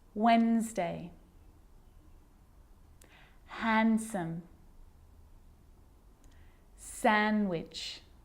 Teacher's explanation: I'm not pronouncing the D in sandwich. I'm just pronouncing the consonant N sound before it.